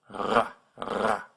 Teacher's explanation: When you do it right, your uvula, that hangy-downy thing at the back of your throat, will vibrate against your tongue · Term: the French R